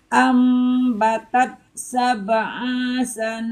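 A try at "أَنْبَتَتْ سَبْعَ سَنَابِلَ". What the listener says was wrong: Kan panjang, Bu. Sab'a. Jadi panjang kan? Harusnya sab'a sanabila fi, gitu. Ancang-ancangnya dia Bu. Jedanya itu di sana gitu. Sab'a sana, bukan sab'a sana, jangan gitu.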